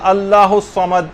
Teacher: صاد کی آواز یہ صحیح طور پر نکلنی چاہیے، لوگ سین کی آواز نکالتے ہیں